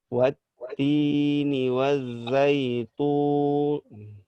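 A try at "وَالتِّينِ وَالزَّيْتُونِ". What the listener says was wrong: Masih tebal. Hati-hati kepancing oleh tebalnya tu. Hati-hati tertukar antara tu dan tu.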